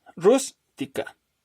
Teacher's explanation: Rústica, palabra trisílaba. Entonces, la sílaba tónica es la primera